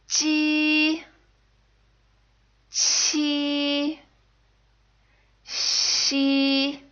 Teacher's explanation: These sounds are made by touching the middle of your tongue to the front roof of your mouth. And at the same time, the tip of your tongue should lightly touch the back of your bottom teeth.